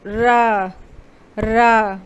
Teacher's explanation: ला को हम लोग पार्श्विक व्यंजन भी कहते हैं और रा को हम लोग लुंठित व्यंजन भी कहते हैं, यानी जीभ से हवा टकराने के बाद जीभ लुढ़कती हुई महसूस हो।